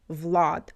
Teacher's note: And also Vlad in Russian. A is more closed.